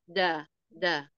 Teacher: mana Dal da dari pangkal gigi seri bagian atas da da ujung lidah bertemu tempat tumbuh gigi seri atas